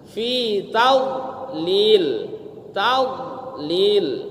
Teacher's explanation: Tidak boleh ada qalqalah. Ya, Bu. Tidak boleh ada pantulan.